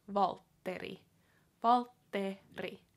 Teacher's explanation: it has the r sound in it too, so it has the double T plus the rolling R